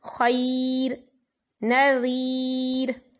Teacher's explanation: وقف کیا، را ساکن ہے تو را ساکن سے پہلے یا ساکن ہے، اس لیے را کو باریک پڑھیں گے